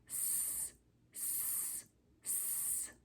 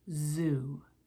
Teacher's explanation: sounds are made with our mouth in the same position but the s sound does not use our voice and the z sound does